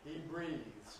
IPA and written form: briːðz (breathes)